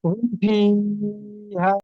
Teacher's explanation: মিম সাকিনের পরে বা ও মিম ছাড়া বাকি অক্ষর ফাই এসছে, তাই মিম সাকিনকে বিনা গুণায় জাহির করে পড়তে হবে, একে ইজহারে সাফাবি বলে।